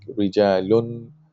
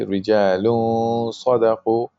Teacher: You have to pronounce the gunna, and you have to do ikhfa, meaning you don't pronounce the noon like rijalun.